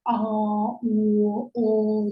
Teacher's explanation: Жақтың кең ашылуы арқылы жасалса, а, о деген кезде, мысалы біздің жағымыз кең ашылады. Ал қысаң дауыстыларды айтқанда керісінше, яғни біздің дауысымыз қысаң, яғни қысылып шығады. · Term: ашық